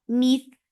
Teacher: Mith for kasra, give e sound attached with tha. Tha will get sifa of rakhawa, and rakhawa is flow of sound.